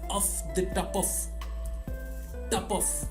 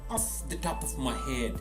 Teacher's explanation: actually sounds like the famous russian violin player top off so the p and the f is pronounced together and the o in the middle is literally removed